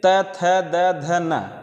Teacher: त वर्ग दंत से बोला जाता है, दंत से। जैसे ऐसा शब्द बोलने पे जिसमें हमारी जीवा दांत को टच करे।